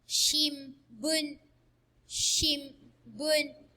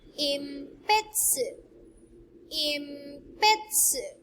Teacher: this hiragana N is pronounced M before the sounds in ba, pa, and ma rows